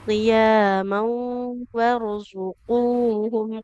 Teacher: Qaf dhamma ketemu waw, ibu. Panjang ya.